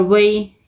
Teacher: یا ساکن سے پہلے زبر ہے، یا لین ہے، نرمی اور جلدی کے ساتھ پڑھیں گے